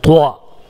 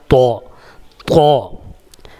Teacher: بلکہ طا ہے۔ طا جو زبان کی نوک ہے، اس کو زبان کی نوک کو، زبان کے اگلے والے حصے کو اوپر کے دانتوں کے جڑ میں سٹائیں گے اور موٹا نکالیں گے، تھک نکالیں گے